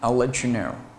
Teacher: 轻辅音的爆破音▁t▁t▁t▁加上半元音的▁ye▁ye▁ye▁就会同化成▁ch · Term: 音的同化